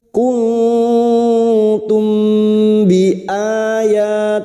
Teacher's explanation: mim sukun mendengung selama tiga harakat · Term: Ikhfa Syafawi